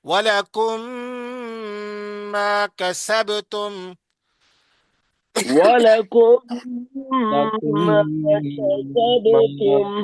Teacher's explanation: یہ میم پہلا ساکن جو ہے متحرک میں دوسرے میم میں داخل ہو جائے گا، ادغام ہو جائے گا، یعنی داخل ہو جائے گا، ملا ملا کے پڑھیں گے.